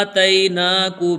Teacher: تئی میں یا لین ہے، یا لین کو جلدی پڑھتے ہیں تو تا یا زبر تئی کو ہم جلدی پڑھیں گے۔